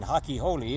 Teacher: they don't pronounce the letter R like we do. To them, it's an H.